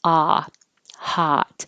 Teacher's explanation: the ah sound is as low as open as your jaw gets